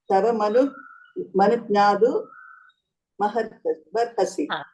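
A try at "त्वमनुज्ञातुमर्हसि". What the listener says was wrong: Tavanudnyatum arhasi. Tavano. Not tava. Tvamanudnyatum arhasi.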